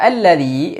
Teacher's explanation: dibaca dengan fathah tidak I atau tidak pula u Tapi a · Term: Hamzah wasal